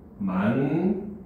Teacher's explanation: 미음의 영향을 받아서 앞에 있는 받침인 디귿이 니은으로 변했잖아. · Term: 비음화